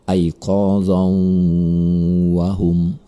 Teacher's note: Maka cara membacanya tanwin tersebut melebur kepada huruf sesudahnya. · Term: idgham bi gunnah